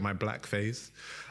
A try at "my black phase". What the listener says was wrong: Black, you should, this is a podcast, so you have to enunciate well. Black phase, not Black face.